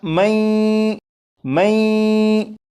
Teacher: یہ جو پڑھا میں، میں، یہاں پر غنہ بھی ہو رہا ہے، لیکن یہاں پر غنہ اس طرح سے نہیں کریں گے کہ زبان تالو سے لگا کر غنہ کریں، بلکہ یہاں پر غنہ اس طرح کریں گے کہ زبان تالو سے ہٹا کر غنہ کریں گے